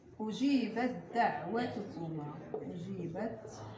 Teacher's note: لاحظوا معي التاء مع الدال، سوف تدغم التاء في الدال فتصبح حرفا واحدا مشددا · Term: إدغام التجانس